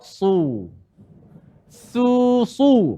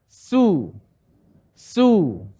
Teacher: Sad dia tebal, sin dia nipis. Maka kat sini kita baca sad dengan tebal.